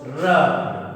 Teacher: लुंठित वर्ण कहते हैं, क्योंकि इसके उच्चारण में जीभ तालु से स्पर्श करती हुई, जीभ तालु से लुढ़क कर स्पर्श करती है, इसे इसलिए लुंठित वर्ण कहते हैं।